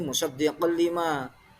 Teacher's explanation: Di situ ada bacaan idgham bila gunnah. Ada tanwin berupa khatin bertemu dengan huruf lam.